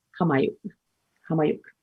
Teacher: it can be pronounced with a bit more of a h at the beginning, or more of a k sound